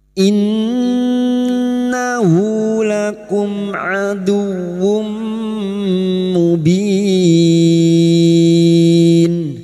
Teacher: Nun yang bertasdid Gun musyadadah kita dengungkan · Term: gunna musyaddada